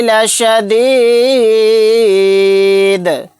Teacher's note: دال کو ساکن بنا دیں گے اور یہاں پر قلقلہ بھی کریں گے آیت کرنے کی صورت میں